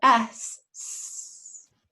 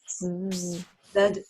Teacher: S, there's no voice. Okay, there's no vibration. Okay. Whereas Z, it's the same mouth position, but you add your voice.